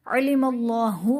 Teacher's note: علم اللہ میں اسم جلالت اللہ عز و جل کے لام سے پہلے میم پر زبر ہے تو یہاں پر اسم جلالت اللہ عز و جل کے لام کو پر یعنی موٹا پڑھیں گے